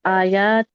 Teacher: کھڑی زبر ہے، اس کو 2 کاؤنٹ اسٹریچ کریں